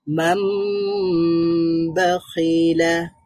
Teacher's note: ন সাউন্ডটাকে ম সাউন্ডে পরিবর্তন করতে হবে। আমরা পড়ব মাম, আবার আবার এখানে গুন্নাও করতে হবে, একটু দেরি করতে হবে। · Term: ইকলাব